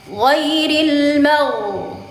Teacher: Taruhkan di ujung tenggorokan, pangkal lidahnya diangkat.